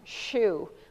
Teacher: This is the sound that we want them to say, the SH sound, shoe, but it's too hard. This is a continuous restricted airflow kind of a sound.